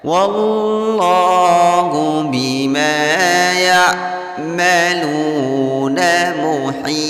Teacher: Kemudian lu di sini ada waw sukun diawali baris dhammah pada huruf lam. Hukum bacaan mad tabi'i dipanjangkan bunyi lamnya cukup 2 harokat saja.